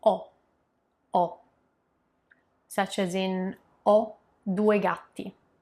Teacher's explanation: O means I have, with that open O, the open O.